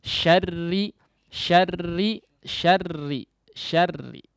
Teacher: kemudian taqrir nya banyak sekali ya maka ini perlu diperhatikan ya dia tetap menjadi tipis meskipun bertasydid